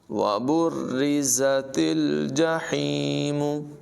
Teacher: زا میں سیٹی کی آواز نمایاں کریں گے اور تا کو لام کے ساتھ ملائیں گے، ہا کی آواز نمایاں ہوگی.